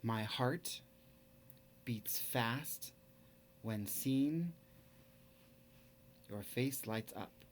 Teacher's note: Each one of those sets of syllables is a foot. My heart, that unstressed and then stressed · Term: iambic pentameter